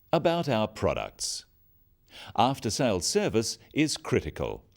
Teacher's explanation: Note the downward intonation at the end of sentences.